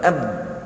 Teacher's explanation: Jangan lantun lah, lantun tu sifat lain. Ab, suara kita tertahan, kita namakan syiddah